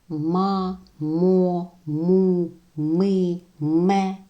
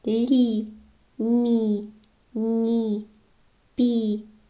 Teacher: тверді приголосні ми вимовляємо ніби зістуленими губами а м'які вони у нас розкриваються як в усмішці